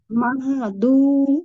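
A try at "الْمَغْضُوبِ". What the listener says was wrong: Iya, pang Iya, angkat lagi pangkal lidahnya biar dia tebal. Karena dot punya sifat isti'la itbaq juga, terkepung di dalam suaranya.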